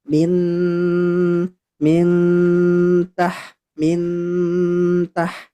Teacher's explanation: tetap ada dengungnya, akan tetapi lebih dekat ke huruf ta. Nah, itulah yang disebut dengan ikhfa ee akrab. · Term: ikhfa akrab